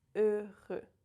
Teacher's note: Here we have twice the same sound, E, the French closed E, and the letter R in the middle. The H is silent, the X is silent.